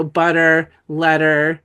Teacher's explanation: That's the that's the original underlying phone, but it becomes duh when it's in the environment of being between two vowels. And the second vowel, the second syllable of the second vowel is not stressed. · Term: flap, flap it